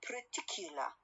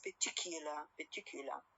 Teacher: R sound is a syllabic one. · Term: syllabic R